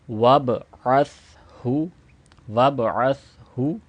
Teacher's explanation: سا کو without فسل sound ریڈ کیا جائے گا، یعنی اس کی آواز سین کی طرح عس نہیں پڑھیں گے. عس یعنی اس میں وسل ساؤنڈ سیٹی کی آواز نہیں پیدا ہوگی.